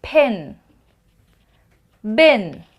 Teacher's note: it's b feel the vibration p feel the air p b no air but there's vibration